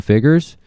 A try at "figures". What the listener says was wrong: I need you to really pronounce that U.